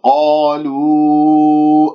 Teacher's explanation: قالوا ضم الشفاه في الواو